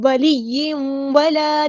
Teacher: ولی، یا مشدد کا دھیان رکھنا. ولی ولا، تنوین پڑھتے کے بعد یوں کرتے ہوئے ہونٹوں کو راؤنڈ کر دیں گے، اور جو واو کا مخرج ہے وہیں پہ آپ کی ہر چیز اس طرح ادا ہو.